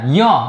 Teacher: નાકમાંથી ઉચ્ચાર થતો હોવાથી તેને અનુનાસિક કહેવાય છે